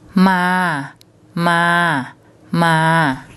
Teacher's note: ma M as an initial consonant which is low class so a low class initial consonant and a live syllable is a mid tone